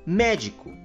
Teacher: Depois, na palavra sorvete, a sílaba que nós pronunciamos com mais intensidade é a sílaba V, pois nós falamos sorvete. E por fim, na palavra médico, a sílaba que nós pronunciamos com mais intensidade é a sílaba mé, pois nós falamos médico. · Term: sílaba tônica